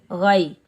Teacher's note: गैन के ऊपर ज़बर, आगे याए साकिन है, ये याए लीन है, इसको हम नरमी और जल्दी से अदा करेंगे।